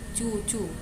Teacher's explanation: bunyi langit-langit keras tersusun tidak bersuara